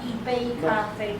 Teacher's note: 杯 has to go up